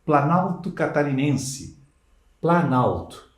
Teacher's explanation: Mas ao unir planalto, plano e alto, a vogal O sumiu. Houve uma alteração fonética. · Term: aglutinação